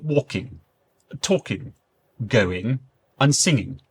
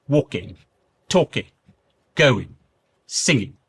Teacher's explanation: the dropping of the G sound in ing words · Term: Drop the G